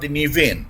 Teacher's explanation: The word nivain, Nei, Iota, Vita, E, Nei, and here the Vita is pronounced like V vector since it's in the middle of a Coptic origin word. The rule for the letter Vita is it is always V vector if it comes in the beginning or in the middle of the Coptic origin word, and it should be followed by a vowel.